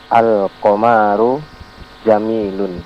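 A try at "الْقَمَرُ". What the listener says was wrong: Al-Qamaru, memnya jangan dipanjangkan.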